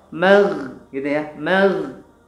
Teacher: Di tenggorokan kita, ya, paling atas di sini. Mag, ya, harus ada suara kayak orang ngorok. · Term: Gha